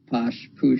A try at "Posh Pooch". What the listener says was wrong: Everyone, you make it very French.